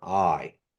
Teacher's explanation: it kind of rises and falls, goes up and goes down